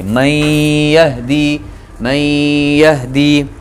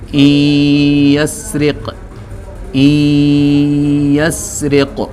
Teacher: ادغام بھی ہو رہا ہے اور غنہ بھی ہو رہا ہے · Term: ادغام مع الغنہ